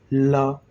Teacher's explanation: जब आप ल वर्ण का उच्चारण करेंगे ला, तो जिह्वा जो है मुखद्वार के मध्य में आ जाती है। जिह्वा मुखद्वार के मध्य में आती है तो जो प्राणवायु अंदर से निकल रही होती है वो जिह्वा पर अवरोध पा करके जिह्वा के पार्श्व से निकल जाती है। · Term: पार्श्विक, पार्श्विक वर्ण